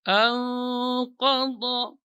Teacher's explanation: dhad itu yang keluar dari sisi lidah menempel pada tawahin al-ulya, gigi geraham atas. Ada 3 tawahin, ya, 2, ketiga dan keempat.